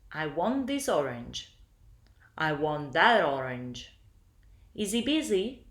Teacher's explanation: This sounds like the final consonant sound migrates and becomes the first sound of the following word. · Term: connected speech